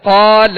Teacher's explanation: قال، اب اس کو قال، لام کو نہیں کھینچیں گے، ٹھیک ہے؟ لام پر زبر ہے تو اسے بغیر کھینچے ادا کریں گے، اور قاف کو ہم نے دراز اس لیے کیا کہ قاف کے ساتھ الف مدہ ہے.